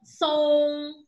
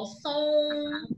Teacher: eu tenho o som nasal, sai pela boca, mas tem a ajuda do nariz